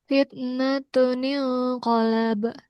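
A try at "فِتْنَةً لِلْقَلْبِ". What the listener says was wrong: Nya didengungkan dulu, ditahan dulu. Fitnatuniu qalabu.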